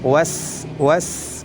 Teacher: Adapun huruf Sin lidahnya tetap di bawah terhampar